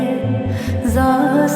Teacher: হায়ের মাখরাজ মধ্য কণ্ঠনালী একটু চাপিয়ে বলবে। জায়ের মাখরাজ জিহ্বা অগ্রভাগ নিচে দাঁত আগা দিকে লাগিয়ে যা সহি হয়ে আসবে